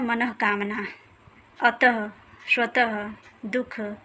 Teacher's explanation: अनुस्वार की तरह यह भी स्वर के बाद आने वाला व्यंजन ही है और इसका उच्चारण ह की तरह होता है। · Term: विसर्ग